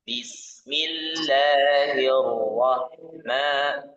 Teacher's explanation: Ro-nya tebal, ha-nya tipis.